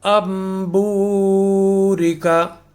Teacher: تنوین اور نون ساکن کی اپنی آواز میم سے بدل جائے گی، اور وہاں پر ہم تنوین اور نون ساکن کی آواز کے بجائے میم کی آواز نکال کر پڑھیں گے.